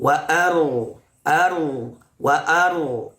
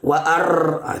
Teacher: Getaran ro itu cukup 2. Wa aru. Jadi tidak sampai wa au.